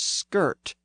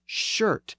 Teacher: the Germanic SK sound was softened to an sh sound in Old English